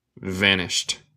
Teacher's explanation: Pero vanished, desapareció, se dice vanished, como si el d es un t.